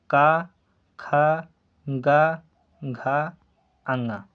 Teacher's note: जिन वर्णों का उच्चारण करने पर जीभ का पिछला भाग हमारे कंठ भाग को छूता है वह कंठी व्यंजन कहलाता है